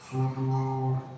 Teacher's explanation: Wa husayna ma fis sudur, tidak berubah karena dal ya dhamma bertemu dengan waw matabi'i dan dia dibaca dengan tafkhim du. Ra-nya dia ngikut ya menjadi tebal karena huruf sebelumnya dia tebal.